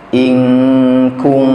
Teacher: nunnya di sana ya samar-samar tidak terbaca ya ketika berjumpa dengan atau bertemu dengan huruf huruf ikhfa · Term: ikhfa Hakiki